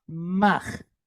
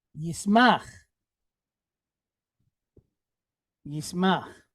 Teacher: So that makes an M sound, and it's pointed patach, right? Patach is a short duration A type vowel. So in Hebrew, A's sound like AH.